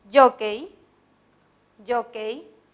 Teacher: en la palabra jockey jockey el acento se ubica en la penúltima sílaba